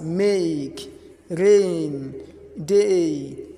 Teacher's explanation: we pronounce it by starting on the A sound and finishing on the E sound